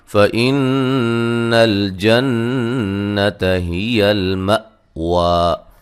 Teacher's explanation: نون مشدد پہ غنہ ضروری ہے